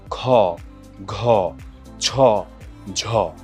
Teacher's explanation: যেটা উচ্চারণের সময় বাতাসের চাপের আধিক্য থাকে, সেটাকে হচ্ছে আমরা বলি মহাপ্রাণ ধ্বনি